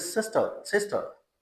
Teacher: एंड वाली रा sound आपको पता है कि जो रिसीव्ड प्रोनाउंसिएशन में वो नहीं बोली जाती. जितने भी इंग्लिश के वर्ड्स हैं, एंड में जो आखिर में जो रा साउंड आती है ना, उसको हम स्किप कर देते हैं, प्रोनाउंस नहीं करते.